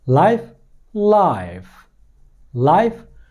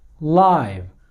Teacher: life, life, life, no vibration. live, vibration, voiceless, voiced.